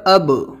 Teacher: آواز لاسٹ میں نکل رہی ہے، گونج رہی ہے، اب، یہی آواز نکالنا ہے آپ کو۔ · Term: قلقلہ